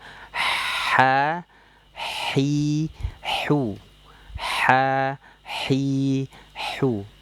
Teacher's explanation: ha juga ini keluarnya dari katup epiglotis. Jadi, ha ini ada desisan udara ya. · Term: huruf ha